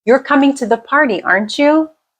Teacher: if your intonation Rises at the end you're asking for confirmation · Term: Rising intonation